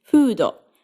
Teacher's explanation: You know how in English you make an F by getting your lower lips close to your upper teeth? Well, in Japanese you create F sounds by simply getting both of your lips close together and slightly pulling in the corners of your mouth. There's no teeth involved. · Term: Japanese F